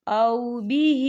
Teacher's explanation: ہا کے نیچے کھڑی حرکات ہے اور اس پر چھوٹی سی مد بھی ہے تو ہم اسے 4 حرکت کی بابر کھینچ کے پڑھیں گے